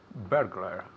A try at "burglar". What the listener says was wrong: Good. Repeat again.